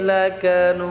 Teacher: লাকানুদ, নুদ এটা আমরা তিন আলিফ টেনে পড়বো